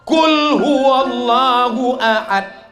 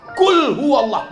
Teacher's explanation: itu pakai qaf, qalqalah di dalam